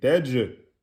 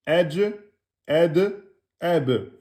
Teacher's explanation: mettez bien la qalqala sur le jim